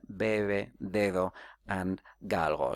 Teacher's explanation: so there are approximant allophones here